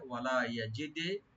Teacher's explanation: ইয়াজিদি, ইয়া open রাখবেন, আর দাল এখানে কলকলা হবে। ওয়ালা ইয়াজিদি, yani ইকো হবে।